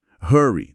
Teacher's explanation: a dica explícita é fazer o R igual ao R caipira do interior de São Paulo. Na legenda do vídeo, esse R até vem destacado com cor diferente.